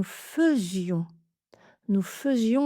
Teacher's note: c'est un des rares cas où ai se prononce eux